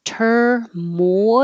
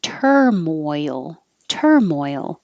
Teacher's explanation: your tongue goes very high moi and then it slides down and has to come up for the l so i made it two parts here but blend it together